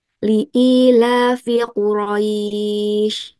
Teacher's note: Jadi cukup diayun ringan dengan panjang 2 4 atau en harakat. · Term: mad lin